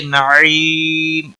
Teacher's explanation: یا ساکن سے پہلے زیر ہے، یا مدہ ہے، 1 الف کے برابر کھینچ کر پڑھیں گے۔ وقف کی صورت میں میم ساکن پڑھا جائے گا، وقف بالاسکان ہوگا، 3 سے 5 الف کے برابر کھینچ کر وقف کریں گے۔